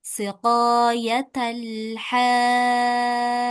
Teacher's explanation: [Musik] Nah, di sini ada huruf jim ya. Kalau huruf jim dia termasuk huruf qalqalah atau huruf yang dipantulkan. Maka setelah ditahan harus dipantulkan kalau kita mau wakaf atau berhenti di sini.